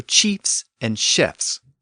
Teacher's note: in the case of chiefs, we retain the F sound at the end and just stick an S after it